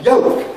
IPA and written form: jəʊk (yolk)